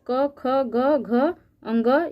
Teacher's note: क वर्ग के अंतर्गत क ख ग घ अंग, ये जितने भी वर्ण है इसको कंठ ध्वनि कहते हैं